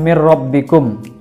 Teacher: Kemudian mir rabbikum itu hukum bacaannya adalah idgham bila gunah, karena nun mati bertemu dengan huruf ro, maka dibaca idgham bila gunah